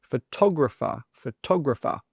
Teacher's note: A lot of students incorrectly say photographer, photographer with the stress on the gra. But no, the stress should be on the tog